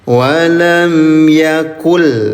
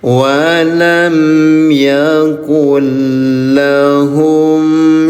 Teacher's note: nun sukun bertemu dengan huruf lam, namanya IBG, idgham bila gunah. Leburkan cara bacanya ya, 0 harokat. Jadi hanya dileburkan saja.